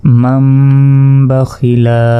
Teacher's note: নুন সাকিনের পর বা এসেছে, তাহলে এই নুনের উচ্চারণ বাদ যাবে। এই মিম গিয়ে সরাসরি এই মিমকে ধরতে হবে।